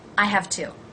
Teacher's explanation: i may say have very quickly but i'm probably not going to drop the h and i'm not going to reduce the vowel I have to because it is the only verb in the